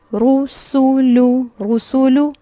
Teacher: پیش میں ہونٹ اچھے سے گول ہوں گے تینوں حروف کو پڑھتے ہوئے، رسولو رسولو، اور پڑھتے ہوئے جو فوکس ہوگا وہ ہونٹوں کی گولائی پہ ہوگا.